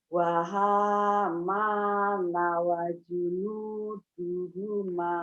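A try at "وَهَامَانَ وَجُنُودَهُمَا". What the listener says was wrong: Wajunuda bukan du, wajunudahuma ya Bu. Wahamana wa junudahuma junudahuma kanu khati'ina.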